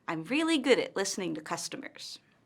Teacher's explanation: Notice how her intonation falls at the end of the statement. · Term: falling intonation